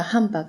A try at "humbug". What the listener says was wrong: it sounds like you're saying handbag